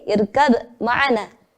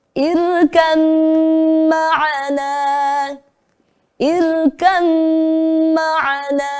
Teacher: Ada ba sukun diikuti huruf mim, maka kita leburkan ke huruf mim. Jadi membacanya seperti irkam ma'ana. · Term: idgham mutajanisain